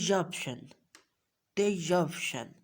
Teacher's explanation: We will pronounce a little y sound in it. हम इसमें थोड़ी सी ये की जो है साउंड थोड़ा सा टेस्ट दे देंगे.